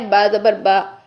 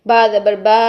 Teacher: ٹھیک ہے، اس کے بعد اگلی ہدایات میں سے دیکھیے ہدایت نمبر 3 کیا ہے کہ زبر کو اتنا مت کھینچیں کہ الف بن جائے. یعنی زبر کو 2 حرکات تک کھینچ کے لمبا نہیں کرنا بلکہ ایک حرکت رکھنا ہے